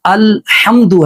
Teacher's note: اور حمد میں جو ہا ہے یہ باریک ہا ہے، یعنی الحمد ہے، اس کو اعلی حمد نہیں پڑھنا۔